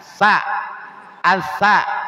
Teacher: Dari ujung lidah dan ujung dua gigi atas. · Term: huruf sa